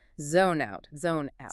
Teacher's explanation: We link the consonant sound at the end of zone directly to the vowel sound at the beginning of out.